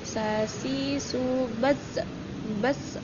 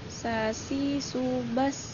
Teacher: sin itu tidak boleh memantul ketika sukun. Dia mengalir, berdesis.